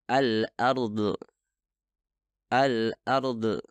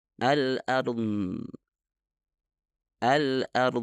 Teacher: Bagian terakhir dari suara itu adalah qalqalah atau pelepasan udara yang seharusnya tidak terjadi.